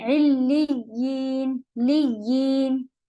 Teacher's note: یا میں ساؤنڈ رہے گی علیین لیین، آواز کٹ نہیں ہوگی